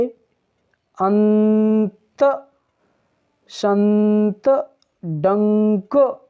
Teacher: इसका उच्चारण मुख और नाक दोनों के मार्गों से हवा निकाल कर के करते हैं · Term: अनुस्वार